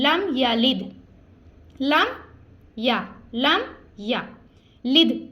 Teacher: ہم نے یہاں پہ غنہ نہیں کرنا, یعنی اس کو کھینچنا نہیں ہے, ہم نے اس کو سمپل ایسے ہی ملا کے پڑھنا ہے. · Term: اظہار شفوی